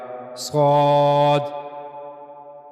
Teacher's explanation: صاد اور سین میں فرق یہ ہے کہ سین اس کو ادا کرتے ہوئے ایک تو وہ باریک ادا کیا جائے گا اور دوسرا سیٹی کی آواز آئے گی، جبکہ صاد کو پر ادا کیا جائے گا، صاد صاد۔ تو زبان کی نوک اوپر کے اگلے دو دانتوں کے اندرونی حصے کے پاس جائے گی، درمیان میں تھوڑا سا فاصلہ رہے گا، وہاں سے صاد ادا کیا جائے گا، صاد۔ اس کے بعد ہے ضاد ضاد ضاد۔